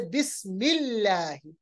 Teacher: अगर अल्लाह से पहले जेर होगा, जैसे बिस्मिल्लाह, अल्लाह के लाम को, लाम जलाला को बारीक पढ़ेंगे। इसी तरह कुलिल्लाहुम्मा, बहुत ही आसान है।